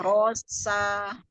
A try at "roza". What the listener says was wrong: Z, Z, zebra, za. Roza. Kalau nama orang tuh kayak ada Reza gitu ya. Reza itu pakai Z. Bukan Rosa, Roza.